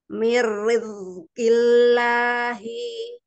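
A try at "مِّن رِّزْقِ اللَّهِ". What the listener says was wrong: Ya, roknya jangan ditebalkan. Semua lidahnya dari pangkal sampai ke badannya rebah. Miri. Yuk, lebih rebah lagi, lebih istighfar lagi. Miri. Pakai di ujung lidahnya banget, ujung banget. Yang di belakangnya tidurin, ya, rebahin. Miri, miri, mirizki, riz.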